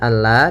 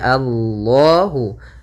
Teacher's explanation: lam tafhim lamnya harus dibaca dengan tebal